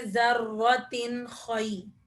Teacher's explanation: یہاں پر خا آ رہا ہے دو زیر کی تنوین کے بعد، اس لیے یہاں پر ہم بغیر غننے کے پڑھیں گے، یعنی اظہار کا قاعدہ کریں گے